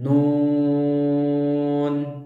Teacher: Panjang bacaan untuk mad lazim musaqqal harfi sampai 6 harokat